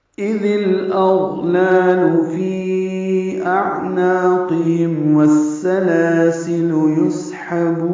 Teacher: فی اعناقہم میں فی میں مد منفصل ہے، یا مدہ کے بعد دوسرے کلمے میں حمزہ آنے کی وجہ سے. حمزہ اقصی حلق سے عین وسط حلق سے ادا کریں گے اور عین ساکن پہ اظہار ہوگا. نون کو دو حرکات لمبا کریں گے، قاف پر ہے، ہا اقصی حلق سے نکالیں گے اور میم ساکن پہ اظہار شفوی ہے.